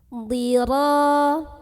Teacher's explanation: Yaitu dengan mengangkat pangkal lidah atau lidah bagian paling belakang kita. Dhira, tanpa mengubah makhraj dari ra, yaitu ujung tepi lidah menyentuh gusi ya. Dhira, ra di sini ada mad tabi'i.